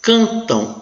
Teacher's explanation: Cantam, o M, a consoante M, nasaliza a vogal e passa a ter som de U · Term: Semivogal